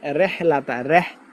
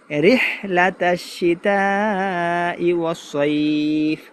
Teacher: অনেক ভাই এই রকে একারে উচ্চারণের মতো পড়বে, রেহলাতা, রেহ বলবে।